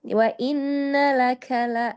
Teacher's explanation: kafnya kasih hama sedikit